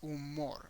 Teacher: next the next thing to the age so humor is umor again create an emphasis in the last syllable